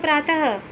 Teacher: विसर्ग का जो उच्चारण होता है वो हा की तरह से होता है। जैसे नम में विसर्ग लगा तो नमः, प्रात में विसर्ग लगा तो प्रातः, ठीक है ना।